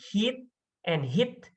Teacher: the sound is made with the front part of the tongue in a raised position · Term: high front vowels